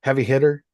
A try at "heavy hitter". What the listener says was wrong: The heavy hitter, not the heavy hitter. It's the heavy hitter. Yeah, you can't use the H's. The heavy hitter.